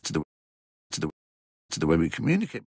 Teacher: Here 'to the' becomes /tə ðə/.